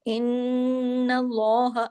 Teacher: نون پہ تشدید ہے، بڑا غنہ ہوگا. ان اللہ، اللہ کے نام سے پہلے زبر ہے، لام ہیوی بھی ہوگا.